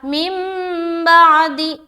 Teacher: ایک چھوٹی سی میم آ گئی ہے، اور اس کے بعد یہ با ہے. تو نون ساکن کے بعد جب بھی با آ جائے تو نون کو میم سے بدل کر پڑھا جاتا ہے. اس کو کہتے ہیں اقلاب کا قاعدہ.